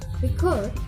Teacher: This record is the verb, so the primary stress in the second syllable, record, and the sound is quick.